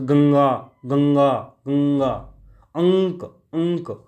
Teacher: तो नाक से जो है आवाज़ सुनने को मिलती है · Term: अनुस्वार